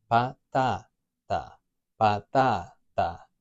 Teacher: So a word that ends in an A, like patata, has 3 syllables, patata, and we've got that a vowel sound, a, patata, nice and simple, 3 syllables, there's no accent, no tilde. So it's going to be the second to last syllable, the strong one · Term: la sílaba tónica